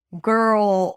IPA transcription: ɡɜːrl